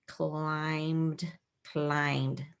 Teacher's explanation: this B is actually silent in this word climbed and the Ed works together to make one sound climbed it's all one Chunk in number eight I see an